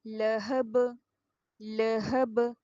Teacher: اس کو لاہب کر کے نہیں پڑھیے گا کیونکہ زبر کو ہمیں چھوٹا پڑھنا ہے. لہب آدھا آدھا پڑھیے.